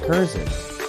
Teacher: with the emphasis on the second syllable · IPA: /həˈræsmənt/